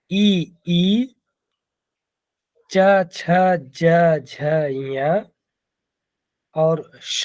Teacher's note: ई, च, छ, ज, झ, य और श का उच्चारण स्थान तालु होता है।